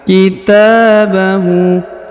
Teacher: huruf ta dipanjangkan dua harakat karena di atasnya terdapat Alif kecil